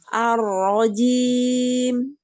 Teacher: Kurangi sedikit getaran pada ro.